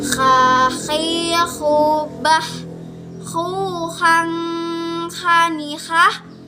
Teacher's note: itu tuh dikeluarkannya di tengah tenggorokan yang terdekat dari rongga mulut. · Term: huruf kho